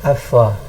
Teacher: Mim dua bibir, fa pula gigi atas dengan bibir bawah.